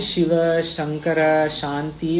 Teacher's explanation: शिव शंकर शांति वो वो तालव्य शकार है।